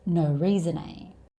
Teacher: the consonant sound at the end of reason, n, and the vowel sound a tends to be joined together to make one long word. So this whole sentence actually sounds like one long word.